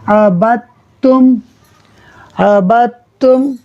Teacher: ہجے کرنے میں دال کا نام لیا مگر جب ملا رہے ہیں تو دال نہیں پڑھ رہے بلکہ با کو ڈائریکٹ تا سے ملاتے ہوئے پڑھ رہے ہیں، عبت۔ اب تا کی جو اپنی حرکت ہے پیش، اس کو آگے ایک حرف آ رہا میم ساکن، اس سے ملا کر ہم پڑھ دیں گے